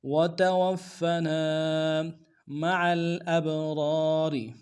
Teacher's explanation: نون سے ادا کریں گے، تا کو نون سے ادا کریں، اگلے واو کو فا کے ساتھ ملانا ہے، فا کے اوپر تشدید زور دیں گے · عین کو گہرائی سے ادا کرتے ہوئے لام کے ساتھ ملانا ہے